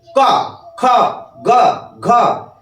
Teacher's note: একটা গতিবেগ সহকারে প্রথমে আটকে দিচ্ছে তারপরে ছাড়ছে একটা গতিতে ছাড়ছে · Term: স্পর্শবর্ণ